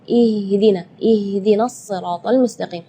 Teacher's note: Ya, itu tidak boleh, itu keluarnya dari dada. Sedangkan makhraj huruf H itu adalah dari tenggorokan. Jadi keluarnya tipis karena H itu termasuk huruf di antara 28 huruf hijaiyah yang paling lemah adalah huruf H.